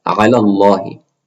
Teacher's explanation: So before the lam in Allah, we had a long alif, so this is heavy lam